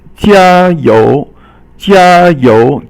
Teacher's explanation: 加 is first tone, and 油 is second tone.